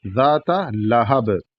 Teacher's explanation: یہاں پر بھی جب رکیں گے تو لہب قلقلہ کے ساتھ رکیں گے